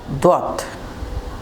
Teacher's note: জিহ্বার গুড়ার কিনারা উপরের দাঁতের গুড়ার সাথে লাগিয়ে উচ্চারিত হয় দত।